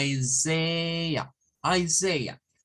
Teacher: Luego la S-A-I como Isaiah, Isaiah. Es decir, vamos a terminar con un schwa al final.